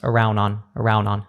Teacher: it almost sounds like you just have a double n there like one word